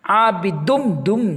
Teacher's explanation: تنوین کے بعد میم آیا تو ادغام یرملون یعنی ادغام میم